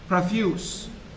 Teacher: The nucleus is the schwa, but the onset is made up of two sounds, pa and ra.